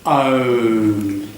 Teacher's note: So it starts really big and it goes down to like a W. Like when you say a W, that tight little fish mouth. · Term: diphthong